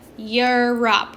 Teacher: that E in the front is making that Y sound.